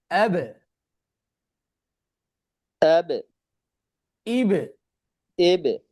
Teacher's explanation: কাসর এর দিকে মাইল তথা ধাবিত হয়ে উচ্চারিত হবে